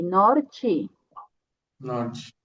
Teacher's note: E aqui temos uma T, então a pronúncia vai ser Ti, norte.